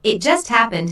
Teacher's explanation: notice the stress on just which emphasizes that the accident happened very very recently